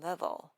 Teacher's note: Never stop your voice or the air. Instead, connect the two vowels before and after the V sound with a smooth continuous buzz